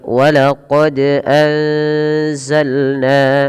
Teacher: tajwid pada ayat ini kita lihat teman-teman pada lafal walaqod anzalna pada lafal huruf Dal yang dia berharakat sukun ini wajib kita pantulkan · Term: qolqolah